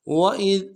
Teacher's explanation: واو کو نرم سے ادا کرنا ہے، حمزہ کو ذال کے ساتھ ملائیں گے، ذال کو باریک ادا کرنا ہے۔